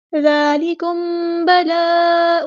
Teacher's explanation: میم ساکن پر با ہے تو اخفاء شفوی ہوگا، ایک الف کے برابر یہاں رکیں گے